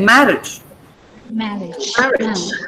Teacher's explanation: No, the stress is on ma. So you say marriage.